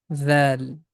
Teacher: Tip of tongue is touching with the edges of frontal teeth, and the small portion of the tip comes out from the mouth.